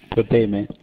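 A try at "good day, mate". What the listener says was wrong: No, you said good day. You have to say good, good eye. Say it all together good now.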